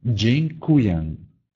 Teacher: В слове дзинкуем два носовых гласных.